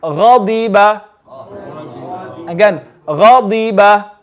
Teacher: If you notice in this word, the ghain is full and even the dad is full.